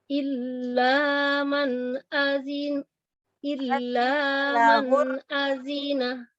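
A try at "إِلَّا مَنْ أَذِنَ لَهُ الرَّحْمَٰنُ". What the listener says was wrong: Cepat ya, satu-satu ketuk. Illanya tetap panjang.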